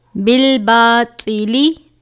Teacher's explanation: طوا ہے، پر پڑھا جائے گا، حروف مستعلیہ میں سے ہے